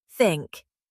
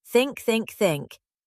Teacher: Feel your tongue at your teeth for the th, then pulling back for the ink.